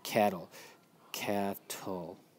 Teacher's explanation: So it's hard to tell since the vowel sound at the end of it always makes the same ul sound. And your accented syllable is your first syllable